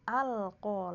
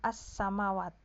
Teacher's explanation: Alif lam qamariyah. Lamnya itu dibaca jelas gitu loh. Ya, kalau alif lam syamsiyah kan lamnya hilang.